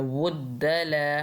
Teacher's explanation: वाव को जब दौद से मिला रहे होंगे तो हमने मोटा पढ़ना है